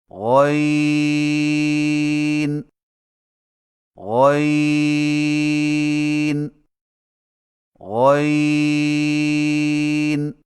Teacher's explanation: غین کی ادائیگی میں زبان کی جڑ کو تالو کی طرف بلند کرتے ہوئے موٹی آواز میں پڑھیں